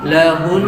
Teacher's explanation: Nabrunya pada huruf nun atau mim yang bertasydid. Jika kita mau waqaf di situ, maka ditahan gunahnya, tapi nggak diucapkan nunnya. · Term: an-nabru